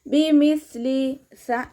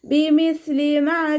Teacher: കൊണ്ടുവരുക ഹംസയുടെ സൗണ്ട് ആയി പോകാതെ നോക്കുക ബിമിസ്ലിസ ലൈറ്റ് ആക്കിയിട്ട് ഉച്ചരിക്കു ട്ടോ നമ്മുടെ നാവിന്റെ അറ്റം മേലെ മുൻപല്ലിന്റെ അറ്റത്ത് വെച്ചിട്ട് കുറച്ച് എയർ പുറത്തോട്ട് പോകുന്ന സൗണ്ട് കൊടുക്കുകട്ടോ നാവിന്റെ കുറച്ചു ഭാഗം പുറത്തോട്ട് കാണുന്ന രൂപത്തിൽ വെച്ചിട്ട് എയർ പാസ് ചെയ്യുന്ന സൗണ്ടും